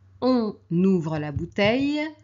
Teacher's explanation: on doit faire la liaison entre le N et le O, donc la voyelle